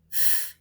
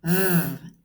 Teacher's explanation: the f f well stay there and say v f v it's the same place one without vibration F the other one causes vibration V